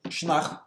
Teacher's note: in Munster, the form is Sionnach with the stress on the second syllable. As I said before, if all vowels in a word are short, and we have second syllable ACH, the stress goes on the ACH, except in abstract nouns.